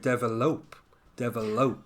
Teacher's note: I often hear it with the stress on the last syllable